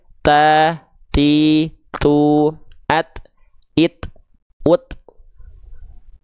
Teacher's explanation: Ujung lidah kita sentuhkan ke pangkal gigi seri atas kita. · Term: huruf ta